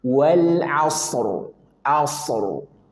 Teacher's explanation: Ketika dia dua sukun, ada shad sukun dan ra sukun, maka masing-masing punya hak setengah huruf tanpa kehilangan sifat dia. Sad punya sifat rakhah, alirkan. Ro bainiah dan ro sebelumnya sukun sebelumnya fathah maka dia wajib tafkhim tebal wal asr.